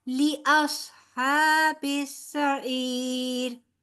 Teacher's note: ली जो है हमारा लंबा नहीं होना चाहिए, ठीक है। बड़ी हरकत है, ली अस्हाबिस सईर फ़अतरफू बिज़म्बिहिम फसुहक़न लिअस्हाबिस सईर।